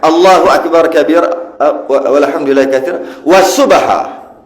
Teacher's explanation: dia panggil qalqalah sughra. Bunyi dia macam lantun gitu, macam jalan sikit-sikit je.